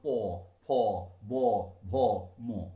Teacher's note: ওষ্ঠ অধর স্পর্শ করার ফলে শ্বাসবায়ু বাধাপ্রাপ্ত হয়ে যে ব্যঞ্জন উচ্চারিত হচ্ছে তাকে বলা হচ্ছে ওষ্ঠ ব্যঞ্জন।